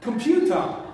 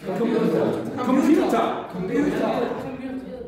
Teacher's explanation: the stress is on the second one